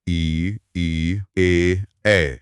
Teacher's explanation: जब आप ई या ई बोलते हैं तो जीभ का अगला हिस्सा ऊपर उठता है। इन्हें अग्र स्वर कहते हैं।